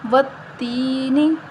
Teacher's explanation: یا مدہ ہے، یا سے پہلے زیر ہے تو یا مدہ کو ایک الف کے برابر لمبا کریں گے،